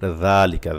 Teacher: জাল পাতলা জিব্বার আগা দিয়ে